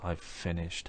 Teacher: we've reduced have to v, and we don't hear it separately from the v sound at the beginning of finish